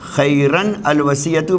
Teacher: جب تنوین کا نون اپنے بعد والے لفظ سے بعد والے ساکن حرف سے ملانا پڑے تو ہم اس کو کسرہ دے کے زیر دے کر اس نون کو پڑھ دیتے ہیں